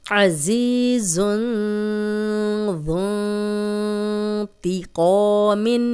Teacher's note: یہاں پہ تنوین تھی، آگے ذال آ گیا، اس لیے ہم نے غنہ کیا ہے